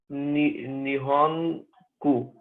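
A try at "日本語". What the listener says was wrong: So that tenten has come and it has turned into gagi guge go. So go.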